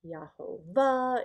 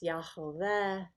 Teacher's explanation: So when I say Yod He, Yaho, Vav He, it's not Yahovah, it's not Yahoveh, it's not Yahovah, it's not Yehovah. There's kind of almost a little diphthong between the ah and the eh, so it's Yahoveh.